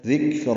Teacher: اب اللہ ذکرہ، ذال نرمی سے ادا ہوگا، کاف باریک ہے، اس پہ ہم سے را پر ہے. ذکرہ، را کو دو حرکات لمبا کرنا ہے، موٹا پڑھنا ہے